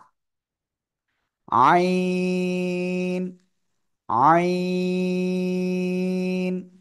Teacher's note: গলার মধ্যখানে হালকা চেপে বাতাস বন্ধ করে আপনার এই অক্ষরটা উচ্চারণ করতে হবে এ অক্ষরে কিন্তু কোন বাতাস বের হবে না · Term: আইন অক্ষর